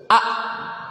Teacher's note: Hamzah sukun a enggak ngalir suaranya